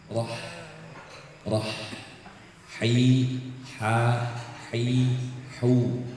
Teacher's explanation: ha itu di tengah tenggorokan dia punya hamus dan rikwah suara harus ngalir nafas juga harus ngalir